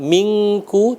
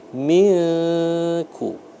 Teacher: Samar-samar itu kita tekan, tetap kita tahan selama 2 harokat dengan bunyinya disamarkan antara nun dengan kaf. Bukan dibaca mingku tapi milku ya, antara nun dengan kaf itu namanya samar. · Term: ikhfa